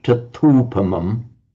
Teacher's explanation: It became a long u because it was tata upamam, just merged into tatupamam. But the separate words are tata with a long a and the upamang with a short u.